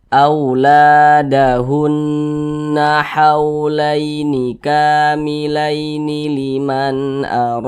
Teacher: cara membacanya itu digunahkan digunahkan tuh ya didengungkan jadi suaranya itu kita tahan kita panjang sejenak